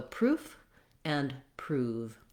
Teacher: we actually hold the vowel oo longer in the word prove than we do in the word proof. So when there's a f at the end of the word, this has a shorter duration of the vowel.